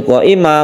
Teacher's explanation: Qa ini kita panjangkan sampai 5 harokat. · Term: Mad wajib muttasil